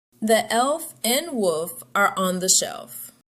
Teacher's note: For example, wolf ends with LF. The L sound may be hard to hear because it's pushed into the F sound. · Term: consonant blend